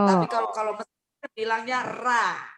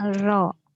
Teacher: Kalau Arab Saudi, Yaman, terus mana lagi ya, seputaran Emirat Arab gitu, ro, jadi o dianya.